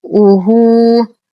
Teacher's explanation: لدينا ها ضمير توصل بواو مدية بمقدار حركتين صلة صغرى